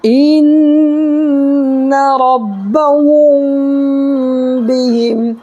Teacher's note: میم ساکن کے بعد با آئے تو گنہ کے ساتھ اخفا ہوگا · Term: اخفاء شفوی